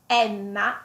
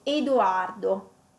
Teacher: sentite come la E è aperta e Edoardo con la E chiusa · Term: E aperta